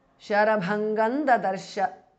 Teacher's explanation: So the Anuswara changes to n, which is the nasal of the Tavarga. Sharabhangan Dadarsha because of sandhi.